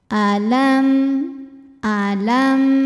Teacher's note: huruf selain mim dan ba di sini hurufnya adalah huruf ya cara baca mim sukunnya adalah dibaca dengan jelas bunyi m dan kita tidak perlu menahan bunyi M tersebut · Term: izhar syafawi